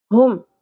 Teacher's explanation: ہا اقصی حلق سے ادا ہوگا گہرائی کے ساتھ. ہا یا سانس کی آواز نہیں آنی چاہیے.